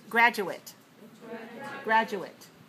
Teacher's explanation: they have the same syllables and stress but the last syllable is a different vowel quality